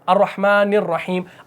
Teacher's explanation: اب نررحیم نون کی زیر کو را کے ساتھ ملا دیا